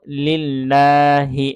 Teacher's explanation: এখানে আল্লাহ শব্দের লাম এটা আমরা এক আলিফ টেনে পড়েছি কারণ হচ্ছে আল্লাহ শব্দের লামের উপর খাড়া জবর আছে হ্যাঁ এজন্য